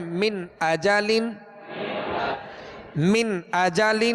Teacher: झटका भी नहीं देना और गुना भी नहीं करना। गुन्ना मीन अजालिन ये जो ठहर गए ये गुना कहलाता है। · جھٹکا بھی نہیں دینا اور غنہ بھی نہیں کرنا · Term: इज़हार, اظہار